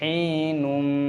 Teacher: Idgham berarti memasukkan, itulah sebabnya ada tanda tasydid di sini, dan diucapkan dengan bersenandung, disertai suara sengau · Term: Idgham bi ghunnah